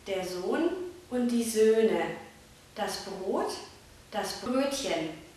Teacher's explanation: das lange o aus o wird Ö